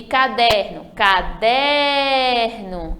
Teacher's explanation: a sílaba forte de caderno caderno é o der penúltima sílaba